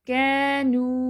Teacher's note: کی بھی 2 time long ہے اور نو بھی 2 ٹائم لانگ ہے